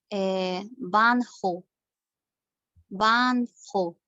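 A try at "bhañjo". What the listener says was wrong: Sí, solo que la H es un poquito menos pronunciada, porque sí, como por ejemplo, no la pronunciamos tan fuerte porque no no está al principio, digamos. Por ejemplo, la palabra jare, como dice la consonante aspirada, que es la que tenemos acá como ejemplo, que dice, ¿no? La H como la H aspirada de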